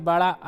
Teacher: बड़ा आ जो होता है ये आपका पश्च स्वर होता है।